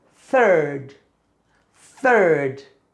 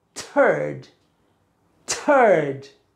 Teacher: When you say turd, there's a little explosion.